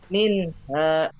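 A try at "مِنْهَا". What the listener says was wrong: Mm-mm. Baik.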